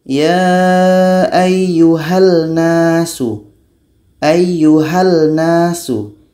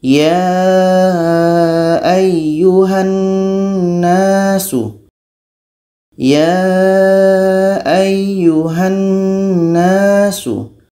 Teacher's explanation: Kalau kita baca seperti ini, ya ayyuhal nasu, ayyuhal nasu, yang terdengar lam, nunnya tidak terdengar, maka itu idgham kamil belum terjadi, bacaan kita masih salah.